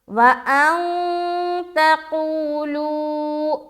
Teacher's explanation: نون ساکن کے بعد حرف تا آ رہا ہے, یہاں پر ہمیں اخفاء کا قاعدہ کرنا ہے. وَأَن تَقُولُوا, تَقُولُوا دونوں جگہ واو مدہ, واو ساکن سے پہلے پیش اور یہاں بھی واو ساکن سے پہلے پیش.